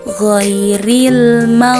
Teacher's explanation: qolqolah Jadi tidak boleh dipantulkan cara membaca yang benar adalah ghairil jadi dia keluar dari ujung tenggorokan tanpa harus dipantulkan hurufnya